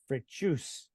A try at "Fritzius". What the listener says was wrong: No, it's Fritzius. You got the accent on the wrong syllable.